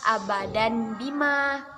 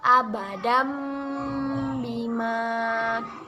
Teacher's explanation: kita mengganti menjadi bacaan mim dan ditahan dua harokat · Setelah kita belajar tajwid, hukum bacaan iqlab, maka bacaannya berubah menjadi abadam bima. Kita mengganti menjadi bacaan mim dan ditahan 2 harokat.